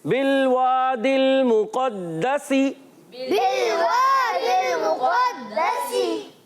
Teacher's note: تو پیارے بچوں دال مشدد ہے, رکت ادا کریں گے اور یہاں سین کی ادائیگی سیٹی کے ساتھ